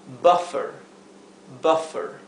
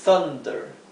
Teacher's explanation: u seguida de dos consonantes o una consonante doble la u va a adquirir el sonido e que aquí lo representé con una a y una e porque es un sonido intermedio a esas dos vocales